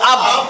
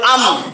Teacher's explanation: 15 নম্বর মাখরাজ দুই ঠোঁট হইতে উচ্চারিত হয় ওয়াও বা মিম।